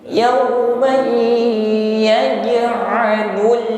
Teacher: Kafartum yauman fathah tanwin langsung kita idghamkan pada ya dan didengungkan. Jangan lupa jim sukun sifatnya qalqalah dipantulkan. Yauma yaj'alul lul lam sukun tawassut ya, jangan dipantulkan.